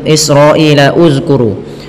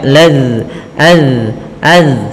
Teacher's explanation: alif di sini tidak dibaca, sehingga la langsung ke lafal zal yang disukunkan, maka laz az. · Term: hamzatul wasal